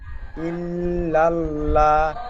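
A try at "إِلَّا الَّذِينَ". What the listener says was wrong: যে প্রথমে ইল বলে একটু গুন্নার মতন করছেন, ইল বলে ধরে থাকছেন, ধরে থাকা হবে না। ইল্লাল, হামজা লামজের ইল। নুন জবর না, নু আউপেশ নু বলছেন। হ্যাঁ, প্রথমে বলেছিলেন নু আউপেশ নু, নু কোনো অক্ষর হয় না, নুন আউপেশ নু।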